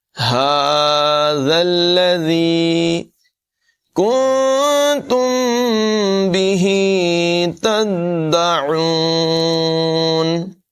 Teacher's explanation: کاف کی آواز باریک ہوگی اور نون ساکن ہے، اس میں اخفا کریں گے. نون ساکن کے بعد تا حروف اخفا میں سے ہے.